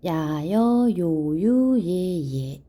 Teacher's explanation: 발음할 때 이와 아를 빨리 이야, 이어, 이오, 이유, 이에, 이에 이렇게 발음돼요. 자, 그래서 이중모음 야여, 요유, 예예 속에 숨어있는 이 소리를 완전한 이가 아니라 절반 빠르게 발음하는 반모음 2분의 1. 자, 이렇게 반모음 2 계열의 이중모음이 있고요.